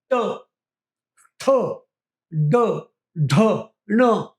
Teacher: मूर्ध्य स्थानाला जीभ चिटकवून किंवा तिकडे जीभ नेऊन जे शब्द निर्माण केले जातात ते मूर्ध्य स्वर